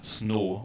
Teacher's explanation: For instance, with the word snow, for instance, in American English we have a diphthong, O, but in South Asian Englishes and in Sri Lanka in particular there's a tendency to use a long monophthong instead